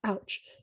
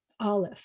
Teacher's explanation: before you get what we know is an O, you have to close your throat and open it up. That's called a glottal stop.